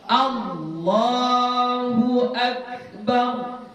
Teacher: biasakan bacanya A, jangan dia berbunyi O, ya, jangan O.